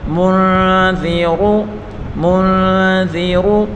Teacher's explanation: انت منذر، میم کو نون کے ساتھ ملا کر پڑھیں گے، نون ساکن کے بعد اخفا کا حرف ذال آ رہا ہے تو یہاں اس نون میں گنہ کر کے پڑھیں گے اور ذال کو نرمی کے ساتھ پڑھیں گے اور را کو پر پڑھیں گے